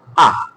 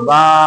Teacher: এটা যেমন হামজা জবর আ বা আলিফ জবর আ, কোন টান নাই। পার্থক্য হলো খাড়া জবরটা একটা টান দিতে হয়, খাড়া জবরটা একটা, বা খাড়া জবর বা, একটু টান, একটু।